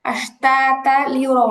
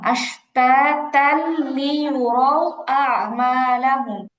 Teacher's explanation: তানবিনের পরে লাম হচ্ছে ইদগামে বেলা গুন্না, গুন্না ছাড়া মিলাই পড়বে।